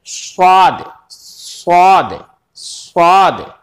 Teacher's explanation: लेकिन स्वाद में आपको थोड़ा सा और कुछ करना पड़ेगा, क्योंकि स्वाद में, स्वाद जो होता है उसमें तफखीम होती है, यानी उसको थोड़ा सा भारी पड़ा जाता है